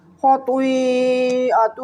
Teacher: خطوئی خا کو میں نے موٹا پڑھا۔ اور یہ جو باریک ہا ہے نا یہ حلق کے درمیان سے ادا ہوتی ہے اور موٹی ہا جو ہے حلق کے نیچے سے ادا ہوتی ہے۔